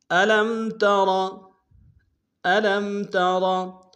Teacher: الم تر، الم تر، الم میں لام کو میم ساکن کے سامنے لانا، میم ساکن میں غنہ کریں گے. ترا میں را کو موٹا ادا کریں گے